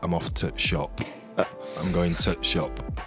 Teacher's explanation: As a Yorkshire accent, we actually miss words out. Okay. So we don't use the word the. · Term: glottal stop